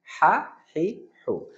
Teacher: বড় হা আমরা যেটা বলি, এটা হলো কণ্ঠনালীর মাঝখানে হালকা প্রেসার হয়।